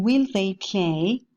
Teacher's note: they play we can see how the first the first a lateral approximant adjusts itself to the following dental sound by becoming dental